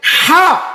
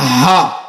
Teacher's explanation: বড় হা বলি, যেটি কণ্ঠনালীর মাঝখান হতে উচ্চারিত হয়